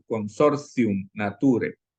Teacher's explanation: la t cuando está precedida de una consonante y luego sigue una vocal se pronuncia como una Z casi